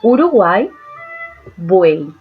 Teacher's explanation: estas tres vocales van a formar una sola sílaba. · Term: triptongos